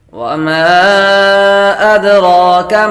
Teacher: میم کے بعد الف حروف مدہ ہے، اور حروف مدہ کے بعد حمزہ دوسرے کلمے میں آ رہا ہے تو مد منفصل ہوگی۔